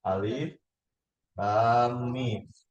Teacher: Nah, ketika mim ketemu mim, ya, satu dihapus kan? Ini dijadikan tasdid kan? Namanya idgham mimi.